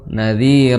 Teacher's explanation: za di ujung lidah bertemu dengan ujung gigi seri atas, ujung lidah ya, ini lidah bertemu dengan ujung gigi seri.